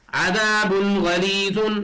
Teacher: اس لیے تنوین کی آواز کو ظاہر کر کے بلا غنہ کے جلد پڑھیں گے